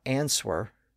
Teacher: about the word answer it's spelled a NS w e r but we don't pronounce the W